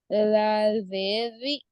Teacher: जाल का मखरज जुबान की नोक ऊपर नीचे दांतों के किनारे, बाहर जुबान नोक बाहर लाके पढ़िए